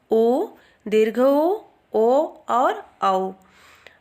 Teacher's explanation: स्वरों का उच्चारण करते समय ओष्ठ गोलाकार हो जाते हैं वह वृत्तमुखी स्वर कहलाते हैं। इनकी संख्या 4 है, उ, दीर्घ ओ और औ।